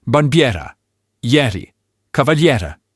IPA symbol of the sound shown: ɛ